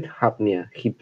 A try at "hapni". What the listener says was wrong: Hapni. Don't change the vowel. You said hipni, something.